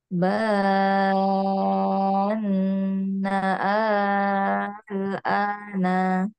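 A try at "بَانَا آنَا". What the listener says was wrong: Nah, kurang panjang, al-ananya kurang panjang, Bu. Kurang panjang.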